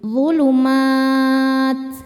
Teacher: maka mimnya panjang, boleh 2, 4 atau 6 harokat asal konsisten dalam sekali duduk. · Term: mad arid li sukun